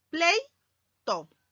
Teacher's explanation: E, vocal abierta, y vocal cerrada se van a juntar para formar una sola sílaba. El silabeo sería así: pleito.